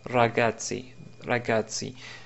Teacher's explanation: Si on prend l'exemple de l'italien, on va dire que c'est le R roulé de l'italien, comme dans le mot ragazzi